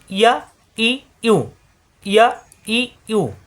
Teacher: ইয়া শব্দের শুরুতে, মাঝখানে, শেষে। ইয়া জিহ্বার মাঝখানে উপরে তালুতে চাপ দিয়ে উচ্চারণ।